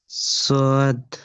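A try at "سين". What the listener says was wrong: হ্যাঁ, এটা সিন। না, এটা সোয়াদ নয়, এটা সিন। দুটো অক্ষরের যে উচ্চারণের মধ্যে যে পার্থক্যটা, সিন, সিটির মতো দন্তের স উচ্চারণ হবে সিন, আর তারপরে যে এর উপরে 3টে নোক্তা আছে, এটাকে শিন, তালবের স্বর মতো উচ্চারণ করতে হবে, শিন।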